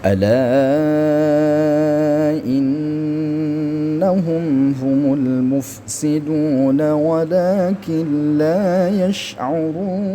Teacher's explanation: Ala panjang di sini ada empat harakat ya. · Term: mad bertemu hamzah